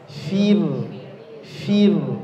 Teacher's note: ro sukun sebelumnya kasrah maka rnya dibaca tipis